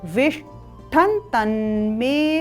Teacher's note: यहाँ पर श मूर्धन्य श है, ट है और तदुपरांत ठ है